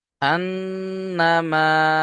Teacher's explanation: হু বেশি করে টান দিতে হবে দুই থেকে তিন আলিফ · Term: মাদ্দে মুনফাসিল